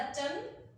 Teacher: जैसे ही आपने बोला चांद, मुंह हमारा खुल जाएगा और आवाज नाक से होकर गले से होते हुए बाहर आ जाएगी, तो ये बन गया हमारा अनुनासिक, चंद्र बिंदु जिसे आप कहते हैं।